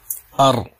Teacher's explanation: زبان جا تو رہی ہے لیکن چپک نہیں رہی ہے